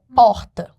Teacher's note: você tem essa questão da tonicidade em que a sílaba tônica é a primeira